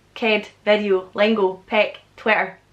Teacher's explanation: there are quite a lot of comments that comment on the fact that I say E instead of I